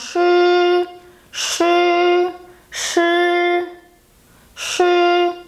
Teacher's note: when I say shi, I round my lips as you can see, and my tongue really curls down.